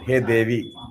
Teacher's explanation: when you are addressing her, Hey Devi, Hey, there it will be Hrasvam, shorter form. Hey Devi. Okay, but when it is a normal Noun form, it is Devi.